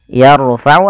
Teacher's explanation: tebalkan huruf rnya karena huruf ro sukun